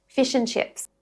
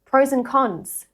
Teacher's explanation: The d simply just drops off when it comes after an n and the next word begins with a consonant sound. The n then links smoothly into whatever comes next. · The A in and also softens to a schwa sound.